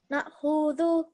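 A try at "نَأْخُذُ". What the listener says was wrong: Yeah, the kha, what does the kha have on top of it? What sign does it have on top of it? A dhamma. How long should the dhamma sound be? 1 second. So your dhamma sound was slightly longer.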